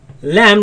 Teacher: my tongue is right after the teeth and you see the sound escapes on the sides